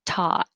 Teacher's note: the vowel is just ah as in hot so open a lot